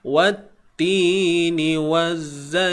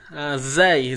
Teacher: huruf waw masuk terus dalam zai yang bersabdu ni, hukumnya juga alif lam syamsiyah